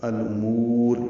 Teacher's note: حمزہ اقصی حلق سے ادا کریں گے، واضح، اور اس کو جلدی ادا کریں گے